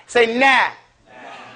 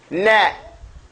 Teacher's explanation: The noon has istifal. What istifal means is that the tongue goes back flat. Say nah. When you finish, your tongue is flat in your mouth between your bottom teeth.